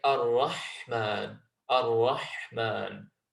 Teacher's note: It's the letter ha, so it comes from the middle of the throat.